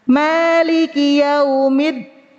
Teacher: Huruf dal itu ee sifatnya syiddah, memutuskan suara. Tapi sering terdengar terbacanya suaranya ngalir.